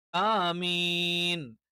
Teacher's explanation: അവിടെ കൂടുതൽ നീട്ടേണ്ട ആവശ്യമില്ല ആമീൻ എന്നല്ല ആമീൻ അപ്പോൾ ഇവിടെ എന്ത് ചെയ്യും ആ എന്നുള്ളത് നമ്മൾ കുറച്ചേ നീട്ടാറുള്ളൂ മീൻ എന്നുള്ളതാണ് എന്ത് ചെയ്യുന്നത് കൂടുതൽ നീട്ടുന്നത് അതുകൊണ്ട്